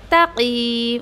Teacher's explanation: अक्सर यहाँ पर क्या मिस्टेक होती है पता है आपको, क़ाफ़ को हैवी पढ़ना है देन बेचारा ता भी हैवी हो जाता है, तक़ीम, कोई ऐसा पढ़ता है तो तक़ीम ऐसा नहीं करना आपको, तक़ीम। ओके, ता हैवी नहीं करना है आपको, क़ाफ़ को हैवी पढ़ना है